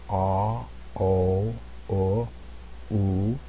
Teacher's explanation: my jaw progressively comes up as my lips get rounder that's one of the characteristics of these of these round vowels